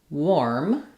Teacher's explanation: Warm with an o r sound. It's actually an o r sound even though the spelling is letters a r in this word. We say this as warm.